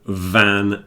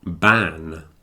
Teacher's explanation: so it's like the f f but it's voiced so you add the vibration to the F and you get V